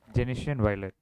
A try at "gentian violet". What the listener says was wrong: It should not be pronounced as genitan violet or Genesian blue.